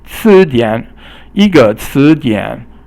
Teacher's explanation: 词 is second tone and dian is third tone